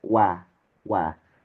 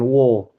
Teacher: wau fathah itu tetap wa wa wa bukan wo tapi wa